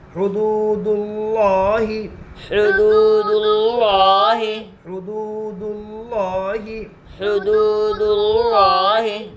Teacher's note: واو کے اوپر جزم ہے جزم والے حرف کو پیچھے والے حرف سے ملا کر پڑھتے ہیں. واو ساکن سے پہلے پیش ہے اس لیے واو مدہ ہوگا. واو مدہ کو ایک الف کے برابر کھینچ کر پڑھے